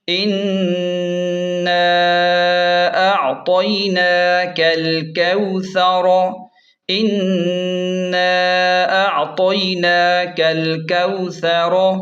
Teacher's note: ثا کو نرم پڑھیں اور را کو موٹا پڑھیں